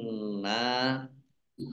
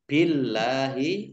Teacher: Allahnya dibaca tipis, karena harokat di depannya kasroh.